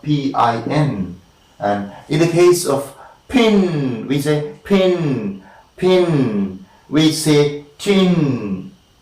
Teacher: an additional puff of air is coming out in the case of pin, and in the case of tin again, and kin again, an additional puff of air is coming, and it is very clear when you articulate. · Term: aspiration